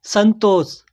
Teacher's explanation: अनुस्वार की ध्वनि न जैसी सुनाई देती है